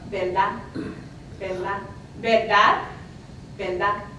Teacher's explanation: So, verdad, I'm exaggerating a little, verdad, truth, would sound more like verdad, verdad. And also that final D could also be dropped